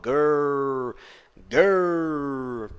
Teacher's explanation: um r um pouco mais caipira do interior